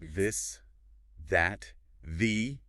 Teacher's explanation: You feel a vibration in your throat.